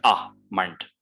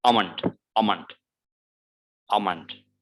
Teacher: We do not pronounce L. So it's almond. It's like a schwa sound.